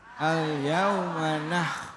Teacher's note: karena sifatnya kho, huruf aslinya kho, maka ketika dia sukun bunyinya nggak berubah, tetap pada porsi hak daripada huruf tersebut.